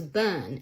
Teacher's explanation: how the R sound is dropped altogether after a vowel.